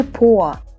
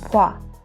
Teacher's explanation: o and a, they merge into a diphthong. So it's gonna be 봐.